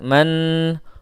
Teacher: Gunnah musyaddadah ditahan 2 harakat.